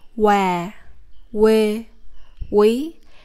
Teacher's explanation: Focus more on the W sound. In the South Vietnam, it is very common for people to drop the K sound and only keep the W sound for this consonant.